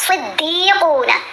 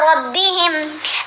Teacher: صاد کو ہم نے موٹا پڑھنا ہے، را کو موٹا پڑھنا ہے